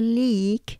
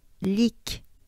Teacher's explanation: it's not a prolonged or yeah long e